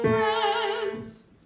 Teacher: turn the S into a Z